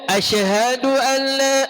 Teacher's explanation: Shin dia tak ada qalqalah.